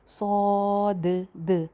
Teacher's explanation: तो इसी तरह इसको मोटा करके और भरा हुआ मुंह करके सौद। और लास्ट पे जो दाल की आवाज़ आ रही है वो बाउंसी साउंड होनी चाहिए